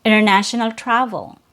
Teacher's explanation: The T is removed between N and your schwa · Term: disappearing T